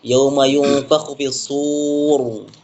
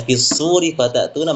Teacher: Kalau diwakaf tebal, tapi kalau diwasol tipis.